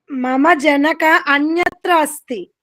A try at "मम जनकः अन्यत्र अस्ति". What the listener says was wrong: जनकः नास्ति, जनकः विसर्ग।